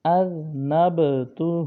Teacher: ذال اس میں سیٹی کی آواز نہیں ہوگی، اذنبتہ نہیں پڑھنا بلکہ ذال زبان کا سرا اوپر کے دانتوں کے اندرونی کنارے سے پڑھا جائے گا، اذنبتہ۔